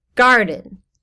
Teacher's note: the first syllable is said more loudly so it goes stressed unstressed